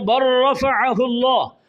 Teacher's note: لام کا را میں ادغام ہوا ہے، لام اور را دونوں قریب المخرج ہیں اور لام کی کوئی صفت بھی باقی نہیں رہی، لہذا اسے ادغام متقاربین تام کہتے ہیں۔